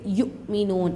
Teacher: لا یؤمنون، یو نہیں پڑھنا ہے یہاں پہ یؤمنون، حمزہ ساکنہ میں جھٹکا ہوتا ہے